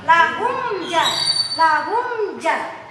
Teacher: Maka ketika mim mati bertemu dengan selain huruf mim dan ba, maka dibacanya tanpa dengung. Tanpa dengung, langsungin. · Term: izhar syafawi